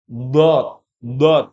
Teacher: keluar dari dua sisi tepi pangkal lidah bertemu dengan sesuatu yang berada di hadapan yakni gigi Graham atas do do bukan do ya Dod itu tertutup tebal do do